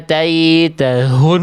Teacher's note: Yang C salah karena H-nya terlalu berlebihan. Dilafalkan di dada gitu ya. Ataitahun. Padahal biasa aja.